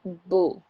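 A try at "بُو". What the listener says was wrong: Bu. Which letter in Arabic goes for damma? Make it long. Make this bu longly.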